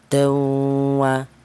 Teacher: Ada dengungnya panjangnya dua harakat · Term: idgham bighunah, idgham bi gunnah